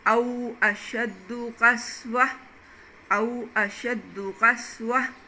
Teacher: یہ گول تا جو تھی وہ اس کی حرکتیں بھی ختم ہو گئی اور یہ ہا میں بدل گئی